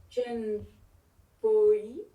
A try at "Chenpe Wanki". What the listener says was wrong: Chenpe. Au niveau de la lecture, c'est Chenpe Wanki. C'est pas Chenpoi. On dira pas en tibétain Chenpoi. On dira Chenpe Wanki.